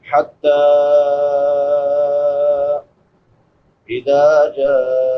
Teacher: جیم کے بعد مد متصل ہے، حمزہ اسی کلمہ میں ہے، حمزہ کے بعد واو مدہ ہے، واو ساکن ما قبل ضمہ یعنی پیش ہے، اس کو ایک الف برابر لمبا کریں گے.